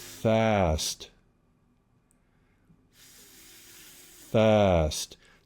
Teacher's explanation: be sure you've stopped and transitioned from the F, the breath on the F, into the voiced A sound. Fast. So that we're not getting any of the voicing in the airflow.